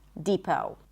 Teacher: It's a high E and then long O as in go, no T.